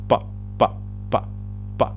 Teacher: Cuando yo digo pa, ¿qué pasa con los labios? Se juntan. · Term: labial